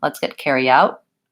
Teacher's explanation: use a stop T on this one let's get carry out I tend to go up make that T position with my tongue and not release the air · I tend to go up, make that T position with my tongue and not release the air. I can say let's get carry out and put that small T on, but Americans will often, when a word ends with a T or a stopped sound like this, they will make a stopped, unreleased stop.